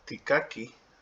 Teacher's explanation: there's no glottal stop at the end, and so that H is very, very important.